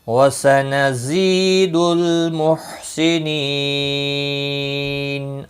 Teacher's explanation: لام ساکن کو ہلانا نہیں، محسنین یا مدہ ہے، ایک الف کے برابر کھینچ کر پڑھیں گے، اور وقف کی صورت میں نون ساکن پڑھا جائے گا، وقف بالاسکان ہوگا، 3 سے 5 الف کے برابر کھینچ کر وقف کریں گے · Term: مد العارض وقفی